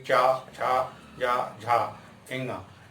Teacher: चा वर्ग में आपकी जीभ नीचे जाएगी और तालु से लगेगी